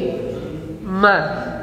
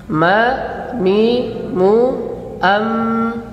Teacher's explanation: Nah, kalau huruf mim menempelkan bibir bawah dengan bibir atas dan sambil mengalirkan suara dari rongga hidung